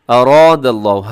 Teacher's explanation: را موٹی پڑی جائے گی، آگے الف بھی موٹا ہو جائے گا